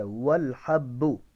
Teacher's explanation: واو کے اندر ہونٹ گول ہوں گے, ٹھیک ہے, اور اس کو خا نہیں پڑھنا, موٹا خا, باریک ہا ہے اور اس کی ادائیگی ہا کے ساتھ ہی کرنی ہے اور با کو سختی کے ساتھ پڑھیں گے اس لیے کہ با مشدد ہے